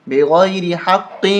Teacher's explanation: وَيَقْتُلُونَ النَّبِيِّينَ، نبیین بغیر حق، یہاں پر ہم نہیں رک سکتے، لام الف زبر لا، یہ لکھا ہے لا کا مطلب ہوتا ہے نہیں، اسٹاپ وقف نہیں کر سکتے، یہاں پر ہم وقف نہیں کریں گے، ملائیں گے بغیر حق قاف کو موٹا کریں گے اور قلقلہ کریں گے